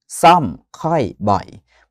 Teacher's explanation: รูปสระออก็จริงนะครับเป็นรูปสระเสียงยาวแต่เวลาอ่านจริงๆเราออกเป็นเสียงสั้นนะ